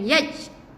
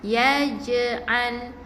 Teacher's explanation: Jangan baca dengan matikan kepada huruf jim tu, tapi kita matikan dengan qalqalah yang ringan saja.